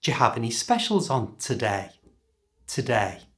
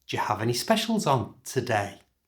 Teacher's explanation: because it's a yes or no question that is it can be answered yes or no listen to how the pitch goes up the end